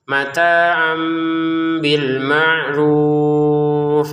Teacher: Artinya jangan lagi dibaca tanwin mataan tapi dibacanya mata amata am. Jadi tanwinnya berubah menjadi mim. Mata am dengan samar.